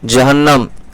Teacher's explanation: نون کے اوپر تشدید ہے، ایک تو 2 بار پڑھیں گے، سختی بھی ہوگی، اور نون اور میم پر تشدید ہوگا تو غنہ ہوگا، یہ بھی ایک قاعدہ ہے.